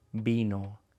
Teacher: Cuando dices vino, tiene que venir de tus labios, no de tus dientes.